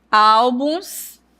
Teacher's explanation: Então, a sílaba tônica é al.